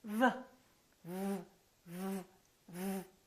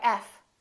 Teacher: V is a voiced sound and F is voiceless. Other than that, the V and the F are exactly the same. · The position of the lips is the same, except one is voiced and one is voiceless. One uses the vocal cords and one doesn't.